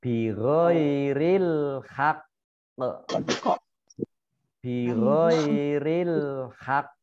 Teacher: kofnya dobel dan berhenti atau wakof, maka ditekan dulu kofnya kemudian baru dimantulkan ya